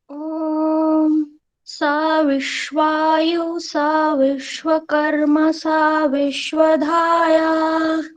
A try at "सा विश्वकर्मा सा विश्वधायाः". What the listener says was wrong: विश्वकर्मा, तो इसमें ह्रस्व हो गया था माँ में। विश्वकर्मा सा विश्वधाया, तो इसको बोल रहे हैं एक बार, विश्वकर्मा सा ऐसे।